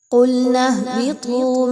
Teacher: اس میں دیکھیے تو قُلْنَا اهْبِطُوا، نون کو ہا کے ساتھ ملائیے۔ ہا کو ہا کی طرح نہیں پڑھنا بلکہ اس کے مخرج کو بہت کلیئر رکھیے۔